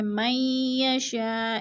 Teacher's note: من یشاء، ادغام مئی پہ، اور یشاء پہ پھر مد متصل ہے، چار الفی مد ہے، چار الف کے برابر ہم نے اس کو کھینچ کر پڑھنا ہے